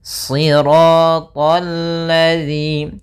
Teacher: alif dan lam tertulis tapi dia tidak dibaca karena yang dibaca adalah lam yang ketiga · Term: alif lam syamsiyah